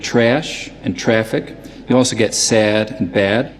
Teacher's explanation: both New York City and Philadelphia raise the Trap vowel in certain circumstances